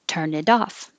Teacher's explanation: now the t changes to a d